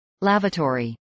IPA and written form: ˈlævəˌtɔːɹiː (lavatory)